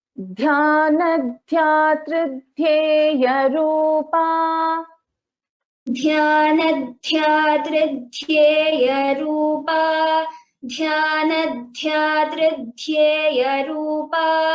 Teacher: Dhyana dhyatra dhyeya rupa. Dha and ya. Dha is a mahaprana. So we have three dhas here in this pada.